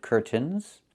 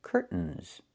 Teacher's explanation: I can say curtains or curtains, but don't say curtains. It's curtains with a real T, curtains. Or I can use a stop T and say stop the air, put the tongue up, curtains, and go directly to the N, curtains. So curtains or curtains.